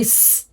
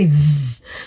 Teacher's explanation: when I say s it is voiceless meaning there's less vibration in my throat but when I say Z then there's a lot of vibration